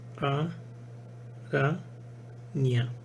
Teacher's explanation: la iod semiconsonante ejerce su influencia palatal sobre la nasal que le precede y la palataliza, dando origen a este fonema.